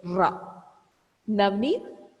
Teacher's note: You just touch the tip of your tongue at alveolar ridge. You touch the tip of your tongue at alveolar ridge and said ra.